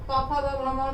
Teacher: और क ख ग घ में कंठ, च छ ज झ में जी और तालु, ट ठ ड ढ में जी और मूर्धा, और त थ द ध में जी और दांत, प फ ब भ म में दोनों ओठ टच करता है।